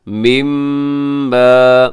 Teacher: میم مشدد پہ غنہ کیجیے گا، لمبا کیجیے گا، الف مدہ بھی ہے